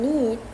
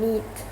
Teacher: the E sound in need is longer than in neat